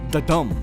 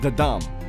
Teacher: the first one is ayambik when we say ayambic this is a weak syllable followed by a strong syllable